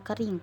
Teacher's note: tinggi bawah depan tak bundar